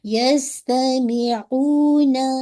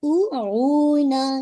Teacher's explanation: تو یہ آپ کی ہو جائے گی آپ کی واو مدیہ، آپ کو اس کو 2 کاؤنٹ پڑھنا ہے، یستمعون، ناٹ او اون، ٹھیک ہے انشاءاللہ۔